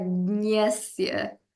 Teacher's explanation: it's kind of like G and Y A, but like at the back of your nose